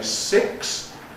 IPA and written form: sɪks (six)